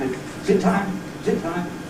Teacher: there’s no [ɪ] at the beginning, so I can say it even quicker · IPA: [zɪt]